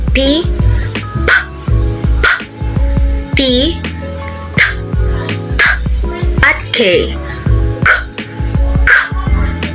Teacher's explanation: Sa pasarap, ang daanan ng hangin ay harang na harang.